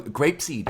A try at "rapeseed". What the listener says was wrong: Rapeseed, not grape, rapeseed.